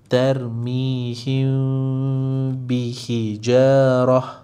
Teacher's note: Jadi sembunyikan mim bermaksud jangan sebut huruf mim. Bermaksud jangan tutup bibir. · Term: ikhfa syafawi